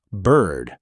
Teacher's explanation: The letter there is I, but the actual vowel sound is an R-colored central vowel